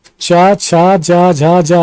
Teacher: ये तालव्य ध्वनियां होती हैं, तो तालु से बोली जाती हैं। तो चा, छा, जा, झा, ज्या ये उच्चारण के इनका उच्चारण स्थान तालु है और ये तालव्य ध्वनियां कहलाती हैं।